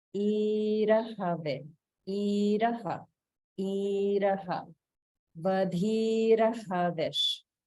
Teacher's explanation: Here in this line, there's one case of Swara Bhakti after Vadhir and before Havish. So because the Ra, Repa sound is followed by a Pa, which is part of the Ushman class, there is a slight Swara Bhakti